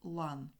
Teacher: слово лан тут всі приголосні тверді